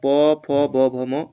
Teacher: प फ ब भ म ये हो जाएगा ओष्ठ्य